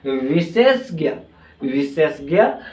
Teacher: पहले तालव्य श आता है फिर उसके बाद क्या आता है मुर्धा आता है